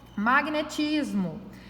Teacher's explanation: Magnetismo é uma paroxítona também, porque a sílaba mais forte dela é a penúltima